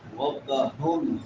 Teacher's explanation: یدعون عین کے بعد واو مدہ ہے. یدعون ربہم را موٹی ہوگی کیونکہ را کے اوپر زبر ہے. ربہم ہا بڑی ہا یہ حلق کے آخری حصے سے جو سینے کے ساتھ ملا ہوا ہے.